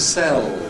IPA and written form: seɫ (sell)